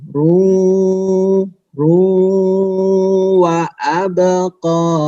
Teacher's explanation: Ru-nya ditahan, kemudian masuk ke hidung.